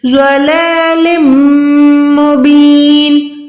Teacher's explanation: زود ہر حال میں موٹا پڑھا جاتا ہے. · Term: موٹا حروف